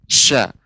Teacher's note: huruf shin ini dia tafashi, lebih menyebar udaranya dari atas bawah lidah, atas lidah ya.